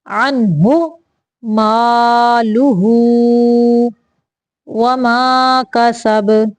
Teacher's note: اغنا عنہ، عن غنہ نہیں کرنا یہاں پہ صرف اظہار کا قاعدہ ہے، ظاہر کرنا ہے نون کو۔